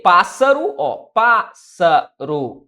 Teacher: eu tenho a sílaba tônica sendo a antepenúltima ou seja proparoxitona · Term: proparoxítona